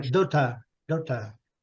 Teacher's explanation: Em inglês, esse R não é pronunciado, não.